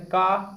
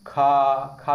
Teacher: अगला क्वेश्चन देखा जाए यहाँ पर, कौन सी ध्वनि अल्प प्राण, देखिए आ चुका है, कौन सी ध्वनि अल्प प्राण जिसमें वायु, जिसमें बोलने में कम समय लगे, ठीक है दोस्तों, वो अल्प प्राण। जैसे का, खा में ज्यादा टाइम लग रहा है तो ये हो जाएगा आपका महाप्राण, का हो जाएगा अल्प प्राण, याद रखिए।